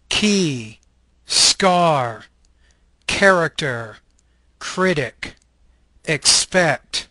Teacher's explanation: This is a velar stop voiceless consonant.